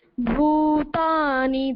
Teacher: दोनों बड़ी मात्राएं हैं तो थोड़ा इनको टाइम देंगे